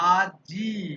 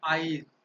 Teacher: আজি, অর্থাৎ বর্গীয় জয়ের পর ই ধ্বনি উচ্চারণ হচ্ছে, কিন্তু বাংলা ভাষাতে আইজ হয়। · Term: অপিনিহিতি